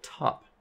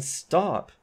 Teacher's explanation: Well, in stop, although T is in the onset of a stressed syllable, it is not aspirated because it is not the first sound. So kind of the rule to generalize this with syllables is to say that these voiceless consonants get the spread glottis feature, which means they aspirate.